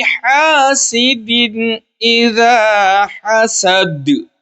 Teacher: بڑی ہاں کو پڑھنے کے لیے جب اس کا مخارج ہوگا تو بیچ حلق سے نکالتے ہیں